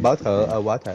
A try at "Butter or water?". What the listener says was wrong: Stop pronouncing the T's. Butter or water?